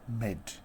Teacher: phases for example we have a word that is amide and the initial part is omitted and it becomes mid